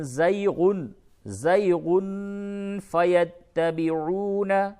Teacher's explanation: تنوین کے بعد فا ہے، اخفا ہوگا